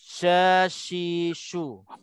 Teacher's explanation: Sebelum nak sebut sya tu dia ada keluar angin sya. Jarayanun nafs, nafas jarayanun nafas maknanya berlarinya angin keluar sebelum sebutnya shin tu.